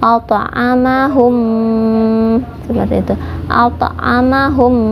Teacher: Idgham mutamatsilain itu 2 yang sama ya, jadi bertemunya huruf yang sama yaitu mim dengan mim, dibacanya ditahan 2 harokat